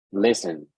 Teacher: in this case the stress is on the first syllable